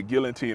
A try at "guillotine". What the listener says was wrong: I don't think you pronounce the L in guillotine. I believe so. I mean, yeah, it could be whatever. I could be wrong.